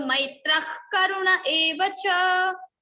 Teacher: if after visarga you are having ka or kha, then the visarga sound will be converted into jivva mulya, that is kha, little bit kha.